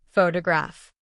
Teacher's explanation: Computer stress on the second syllable, computer. Photograph stress on the first syllable, photograph. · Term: Word stress